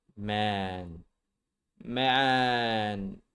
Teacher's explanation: Notice how the tongue flips up to the roof of the mouth for the N.